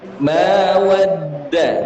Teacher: Ketika kita menggabungkan waw dengan dal, ada suara yang mengembang di dalam mulut.